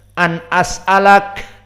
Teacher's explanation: Dan juga an as'alaka, an as'alak, disukunkan kafnya, an as'alak, ada k, tidak ditelan.